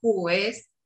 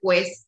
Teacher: Porque en el guaraní se tiene esa consonante glotal, entonces de repente un hablante te dirá juez, no te dirá juez, sino que va a inserir la consonante glotal en esa pronunciación